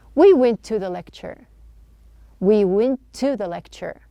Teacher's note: True T, the schwa sound, we are not pronouncing 2 T's.